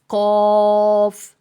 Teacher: زبان کی جڑ کوے کے قریب جب نرم تالو سے لگے تو اس سے قوف ادا ہوتا ہے